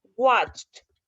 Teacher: Vean, por ejemplo, watched, la ch no tiene voz, watch no tiene voz, es solo como en la boca, no es en la garganta